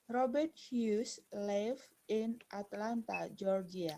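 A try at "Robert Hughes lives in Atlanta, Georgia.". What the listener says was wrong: I remember there is a letter S. You have to pronounce it lives. Lives.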